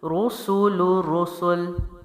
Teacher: میں نے جب رو کا آواز پیدا کی تب میں نے ہونٹوں کی گولائی دی